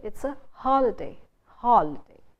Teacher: you're supposed to stress the first syllable